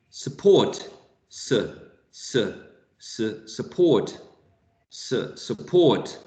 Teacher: So in the first syllable here, you have a schwa